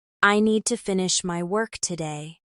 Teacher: Stress on need and work.